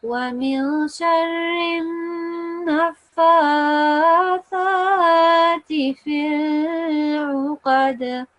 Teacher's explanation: So this is a noon mushaddad. It is a noon with a shadda. You will make the noon sound for 2 seconds. ومن شر, like that, and then you will go straight to the fa and you will prolong that for 2 seconds because of this sign here.